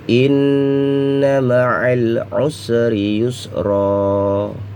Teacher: Ini mim bertasdid dan nun bertasdid, maka digunakan atau didengungkan ya. Inna ma'al, suara lam harus jelas ya, idhar qamariyah. Usri yusra ya, tanwin dibuang apabila dalam keadaan diwakafkan atau berhenti ya.